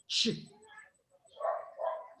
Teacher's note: For example, in the case of the affricates, you do have a significant change because you start with a plosive and then you release with a fricative and you get ch.